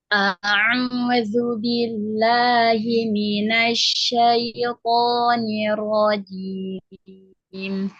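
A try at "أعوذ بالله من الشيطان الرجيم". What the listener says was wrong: Ya, alhamdulillah barakallahu fiik.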